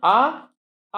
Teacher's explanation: ये आ है कंठ वर्ण, इसका उच्चारण स्थान कंठ होता है